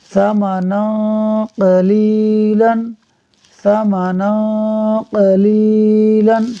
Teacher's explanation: نون پر 2 زبر کی تنوین کے بعد قاف حروف اخفاء میں سے ہے، اخفاء ہوگا، یعنی تنوین کا نون ساکن ہم نہیں پڑھیں گے